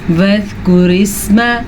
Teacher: را کو میں نے باریک پڑھا کیونکہ را کے نیچے زیر ہے